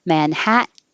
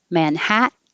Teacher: your t is followed by an in and they're both in the unstressed syllable so the t can disappear